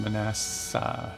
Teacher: it's actually pronounced Manassa, so you emphasize the SS instead of the N